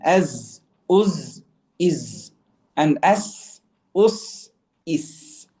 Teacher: for the letters za and sin, the tongue stays in the middle. Okay, it doesn't rise.